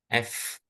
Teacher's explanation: ketika mengucapkan huruf fa itu sebelum harakatnya terucapkan itu ada udara yang mengalir, ada udara yang berhembus.